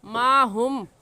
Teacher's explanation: اس میم پر ہم غنہ کریں گے کیونکہ میم ساکن کے بعد میم آ گیا ہے، اور قاعدہ ہے کہ میم ساکن کے بعد با یا میم آ جائے تو میم ساکن پر غنہ کرتے ہیں.